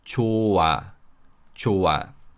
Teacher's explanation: So as you could hear, the 히읗 batchim is not pronounced at all because of iung in the following syllable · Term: 히읗 is silent